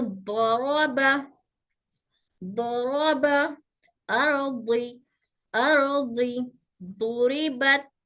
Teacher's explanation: दाल और दौद में फर्क है। हमारी जबान का किनारा हमारे ऊपर दाढ़ों के दरमियान टच होकर, या तो एक साइड टच होगी या दोनों साइड टच होकर हर्फ दौद अदा होगा।